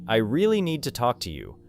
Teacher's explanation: The words that carry the strongest meaning may be really, need, talk, and you. The smaller words move quickly around them. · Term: stressed words